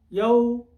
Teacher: میں نے ہونٹ پیچھے رکھے ہیں، حق ادا نہیں ہو رہا واو کا